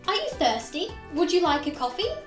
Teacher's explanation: So at the end of the question, our voice will rise in pitch. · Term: rising intonation